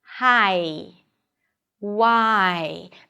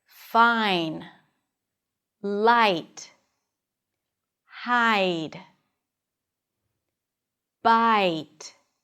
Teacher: Here you drop your jaw for an a sound. That's a front vowel. And then your tongue rolls up and moves forward for the e.